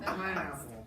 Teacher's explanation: a three-syllable word with the emphasis on the first syllable